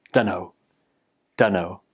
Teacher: Basically, the T sound at the end of don't gets dropped because when you're speaking quickly, the T is a little bit difficult to say. And then don't in don't becomes done.